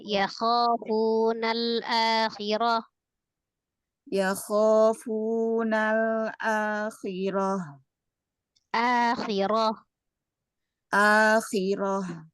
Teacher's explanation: Kho tebalkan ya Kho jangan dimajukan mulutnya ya jangan dimajukan bibirnya tetap dibuka fathah